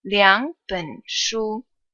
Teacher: So you change the first third tone into a second tone.